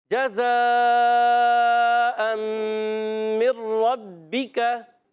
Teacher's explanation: تنوین کے بعد میم، ادغام مال غنہ کا قاعدہ ہوگا، ادغام کریں گے غنہ کریں گے